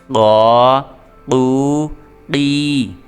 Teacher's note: قاف کو حروف قلقلہ میں سے ہے، اس کو پر کر کے پڑھنا ہے